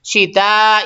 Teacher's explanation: شین نکالنا ہے، شین سیٹی تو آئے گی اس میں